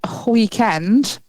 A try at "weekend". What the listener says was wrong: Did you just put a H in weekend? It's like Cool Whip.